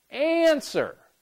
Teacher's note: Answer. And sir, once again, we have the stress on the first syllable.